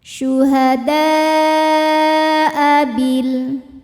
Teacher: Mad tabi'inya adalah alif yang sebelumnya fathah, hamzahnya a, ini satu kata pada kata syuhada'a. Maka dal kita panjangkan boleh 4 boleh 5 harokat. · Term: mad wajib muttasil